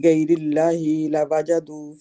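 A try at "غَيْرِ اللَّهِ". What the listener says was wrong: गैरिल्लाही, नहीं ही को खींचे नहीं, ही को नहीं खींचना। गैरिल्लाही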